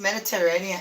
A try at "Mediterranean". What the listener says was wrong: Yeah, Mediterranean. Mediterranean. Mediterranean? no L in it.